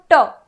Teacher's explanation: है वहां पर स्पर्श हो रहा है फिर हमने कहा ट ट के दौरान हमारी जो जीभ है वह थोड़ी सी ऐसी टेढ़ी होती है और ऊपर वाले हिस्से में जाके लगती है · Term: मुर्धा